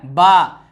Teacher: बा का मखरज है दोनों लबों की तरी मिलकर